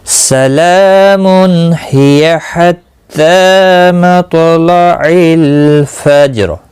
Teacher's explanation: سلامن من نہیں کرنا ہے، اخفا نہیں کرنا ہے، اظہار ہوگا۔